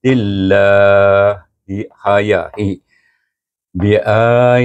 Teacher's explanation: oleh kerana dia baris bawah kita baca dengan nipis